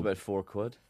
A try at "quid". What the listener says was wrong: No, you're just saying quad. Quad. You said quad, yeah. You did say 4 quid. That's like quiz. Quiz, Q-U-I-Z. Quiz. You do say quiz. You say quiz. quiz. You say quad.